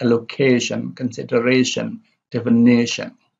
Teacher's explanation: the stress is on the second from the back